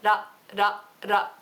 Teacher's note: roll your tongue just ever so slightly, not like a full Spanish perro or something like that, but just a little ra, ra, ra, like that.